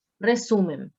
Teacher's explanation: tiene mayor carga de voz en la penúltima sílaba. Y esto es una palabra llana.